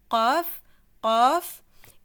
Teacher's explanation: Le fond de la langue va toucher le palais mou.